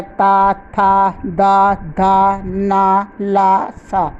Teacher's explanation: दंते वर्ण। जिन वर्णों का उच्चारण जिह्वा द्वारा दांतों का स्पर्श करने से होता है वह दंते वर्ण कहलाते हैं। ये है ता, था, दा, धा, ना, ला, सा।